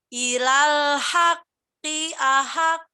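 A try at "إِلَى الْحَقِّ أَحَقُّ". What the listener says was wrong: Kol-kolannya hilang yang sebelah sini.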